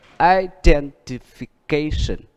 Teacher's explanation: Đó là đuôi ation được nhấn chính nó, ation. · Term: âm nhấn